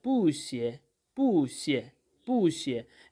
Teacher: Here, there is a rule in Chinese language that when two fourth tone syllables are following one after another or following each other, then we change this first fourth tone into a second tone, which is a rising tone, and the second fourth tone remains at its own place.